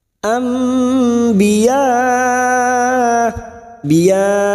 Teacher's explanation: ada mat yang bertemu dengan hamzah dalam satu kalimat, mat wajib mutasil 5 harokat kita panjangkan